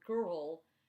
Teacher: these are vowels that lose their distinct vowel sound because they're followed by an R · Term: R control vowels